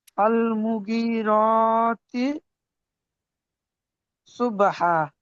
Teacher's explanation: ফল মুগি, মিম পেশ একদম টান হবে না।